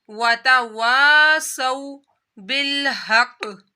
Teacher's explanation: جب واو ساکن سے پہلے زبر آ جائے تو واو لین ہو جاتا ہے، اس کو لمبا نہیں کیا جاتا